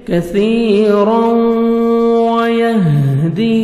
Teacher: تنوین کے بعد واو آ رہا ہے، حروف یرملون میں سے ادغام کریں گے غنہ کے ساتھ، نوز میں ساؤنڈ لے کے جائیں گے